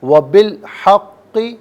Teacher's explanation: اور قاف اس کو پر کر کے پڑھیں گے، مشدد ہے جماؤ کے ساتھ پڑھیں گے